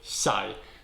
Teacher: There is an I at the end, and it is a fourth tone falling.